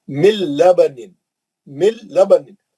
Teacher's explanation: गुन्ना नहीं करेंगे, जल्द लाम और रा से ही पढ़ेंगे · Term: इदगाम बिला गुन्ना